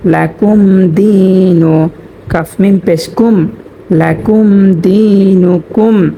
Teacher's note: এখানে মিম সাকিনের বামে দাল আসার কারণে এখানে কোন গুন্না করবো না।